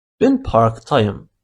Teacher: As you can see, we added y sound between a and ı in order to avoid two vowels beside each other